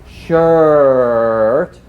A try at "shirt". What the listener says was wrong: A little more stretch, so we're really stretching everything forward and getting nice round shapes.